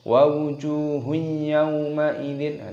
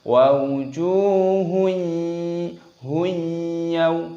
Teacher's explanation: Di sini perhatikan jimnya berharokat dhammah, ada wawu sukunnya, panjangkan jimnya, matabi'i, panjangkan 2 ketukan, dibaca wawujuhun yaw. Dhammah tanwin bertemu dengan ya, hukumnya dibaca idgham bi ghunnah, dimasukkan dan disertai berdengung. Jangan tidak didengungkan, tidak boleh.